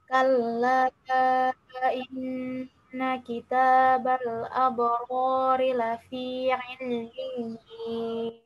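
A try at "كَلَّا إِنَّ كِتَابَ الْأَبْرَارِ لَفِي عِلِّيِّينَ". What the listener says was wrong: Ainnya masih masuk ke hidung. Ail. Sekali lagi. Kalla.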